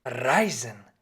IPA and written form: ˈʀaɪ̯zn̩ (Reisen)